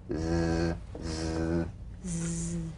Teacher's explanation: The Z cognate S, a voiced S sound fricative. The tongue rim should gently touch the upper gum ridge. Z, z. The tip in gentle contact with the hard palate.